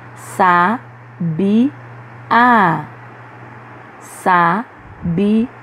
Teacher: Na palavra que a gente acabou de ler, a última sílaba é pronunciada com mais intensidade. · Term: sílaba tônica